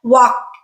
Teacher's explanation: the regular verb already ends with an unvoiced sound an unvoiced consonant and you just leave your voice off and add another unvoiced consonant at the end